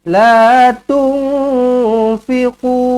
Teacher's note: nun kosong bertemu dengan fa, ikhfa hakiki, dengungkan dua harakat